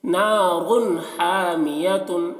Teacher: یہاں پر را میں را کی تنوین پر اظہار واقع ہو رہا ہے کیونکہ تنوین کے بعد حروف حلقی میں سے ہا آ رہا ہے، تو یہاں پر تنوین کو ظاہر کر کے پڑھیں گے، غنہ نہیں کریں گے